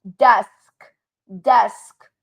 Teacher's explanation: when you say the word desk, you feel no vibration throughout your throat